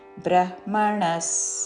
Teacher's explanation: బ్రహ్మ ముందు హ పలికి తర్వాత మ